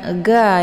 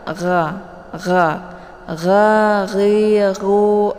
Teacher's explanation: Letak ghin ini di tenggorokan bagian atas ya, seperti orang ngorok gitu ya.